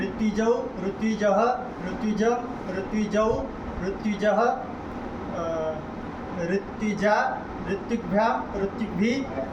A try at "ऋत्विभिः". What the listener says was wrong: विसर्ग नहीं बोल रहे हैं, तो नहीं रहे आप लोग, गलत बोल रहे हैं।